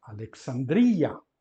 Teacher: E como é um i longo na penúltima sílaba, uma vogal longa na penúltima sílaba, o acento em latim mantém-se na penúltima sílaba, porque ela é longa